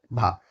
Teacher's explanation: यह जो है ओष्ठ का तो है लेकिन महाप्राण घोष वर्ण है। · कौन सा है प्यारे बच्चे, ओष्ठ है, ये जो है आपका ओष्ठीय महाप्राण, ओष्ठीय महाप्राण घोष वर्ण